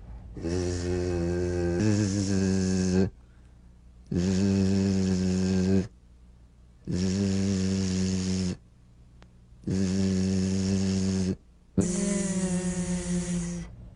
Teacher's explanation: It's in that little space that the Z sound is formed. So feel a smooth, strong vibration in the teeth and in the front of the tongue